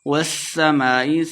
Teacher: سین پہ سیٹی کی آواز آئے گی۔ والسماء مد ہے اس کے اوپر تو اس کو لمبا کر کے پڑھیں گے۔